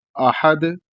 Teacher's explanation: حمزہ کو حلق سے ادا کیا جائے گا، ادنائے حلق سے، اور ہا کو بھی حلق سے ادا کیا جائے گا، اور دال یہ حروف قلقلہ میں سے ہے، اس لیے جو ہے یہاں پر جب رکیں گے تو قلقلہ کریں گے۔